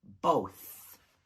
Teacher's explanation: And the TH is unvoiced.